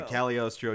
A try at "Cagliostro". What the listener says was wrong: Yeah, everybody gets that wrong. It's not Castle of Cagliostro, it's Cagliostro. The G is silent.